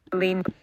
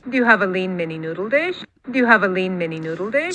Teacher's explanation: So you can hear that sort of emphasis on lean, I think.